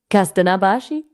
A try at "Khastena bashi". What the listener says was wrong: You say it like this. You say it Khastena bashi. You have to say it Khastena bashi with a kha.